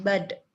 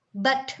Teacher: kata apa bud dengan bug kayak gitu, atau ya bud B-U-D dengan B-U-T, padahal itu udah sama-sama ya, pakainya teh tuh apa, suara alveolar kan, sama, cuma yang satunya vibrate, yang satunya non vibrate, tapi maknanya beda ya kan, but dengan bud, right?